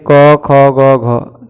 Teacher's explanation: सबसे पहले क्या होता है, क का उच्चारण कंठ से